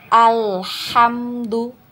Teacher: teman-teman Perhatikan ya di sini ketika membaca huruf lam sukun ya lam sukun diusahakan untuk mengalirkan suaranya sedikit ya dialirkan suaranya sedikit karena di lam sukun ini mempunyai sifat tawasut